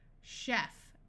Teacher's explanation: in these words CH will sound like sh this usually happens in words that we got from French chef